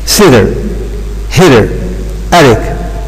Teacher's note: In English it's possible to pronounce T as D in the context when it is between two vowels